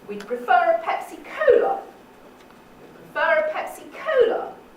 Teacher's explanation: On the first syllable of cola, that's right. And so they see what it would look like with a falling tone on the first syllable of cola.